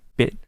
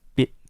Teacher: like uh right after your teeth so when I say beit my tongue stopped right behind my teeth but you don't pronounce the T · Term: short sound